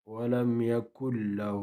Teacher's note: لام را میں سے لام آئے ہیں. ولم یکن له ادغام تو ہوتا ہے لیکن غنہ نہیں ہوتا. ولم یکن له مد اصلی، ایک الف کی مقدار آواز کو کھینچیں گے.